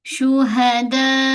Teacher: untuk mad wajib a pastikan empat ataupun lima harakat. Kita ambil empat harakat.